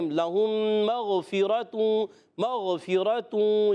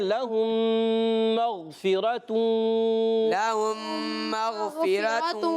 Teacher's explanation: میم کو غین سے ملانا ہے، مگر غین کو ہلانا نہیں ہے